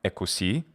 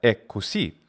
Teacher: there is a doubling of the k sound